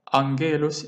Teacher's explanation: Well, in the case of angelos, you can see the letter gamma here. The first gamma pronounced as N.